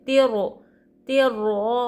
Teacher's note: رائے مشدد کے اوپر زبر ہے تو را کو ہم موٹا پڑیں گے.